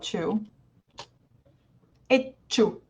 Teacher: when you put the T in front of a CH in English you achieved that little pause that we use in double consonant